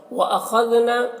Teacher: खा को पुर पढ़ना है, दाल को बारीक पढ़ना है